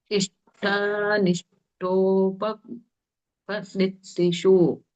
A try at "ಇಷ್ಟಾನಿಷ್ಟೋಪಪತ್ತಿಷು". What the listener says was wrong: ಮತ್ತೆ ಒಂದು ಪ ಇದೆಯಲ್ಲ, ಅದು ಬಿಡ್ತಾ ಇದ್ದೀರಾ ನೀವು. ಇಲ್ಲ ನಿಷ್ಠೋಪ ಕೂಡಿಸ್ಬೇಕು ಅಲ್ಲಿ. ನಿಷ್ಠೋಪ ಹೇಳಿ ಆಮೇಲೆ ಪತ್ತಿಶು ಬೇಕಾದ್ರೆ ಬೇರೆ ಹೇಳಿ ನೀವು, ಆದ್ರೆ ಗ್ಯಾಪ್ ಬಿಡಂಗಿಲ್ಲ ಅಲ್ಲಿ. ಇಷ್ಟ ನಿಷ್ಠೋಪ ಪತ್ತಿಶು.